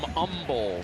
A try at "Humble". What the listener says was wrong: No hate. No H. They don't hate.